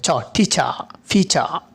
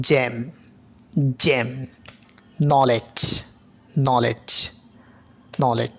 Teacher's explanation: semi ফ্লোসিভ বলার কারণ হচ্ছে কি এটি ফ্লোসিভের মতো শুরু হবে, ফ্রিকেটের মতো শেষ হবে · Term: অ্যাফ্রিকেট সাউন্ড